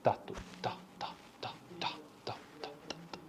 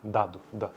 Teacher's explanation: O segmento T é desvozeado e o segmento D é vozeado.